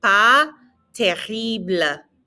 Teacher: that S is silent and the R is in the back of your throat.